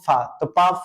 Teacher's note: अघोष भी होगा महाप्राण भी होगा और ये किस वर्ग का है पा वर्ग का है तो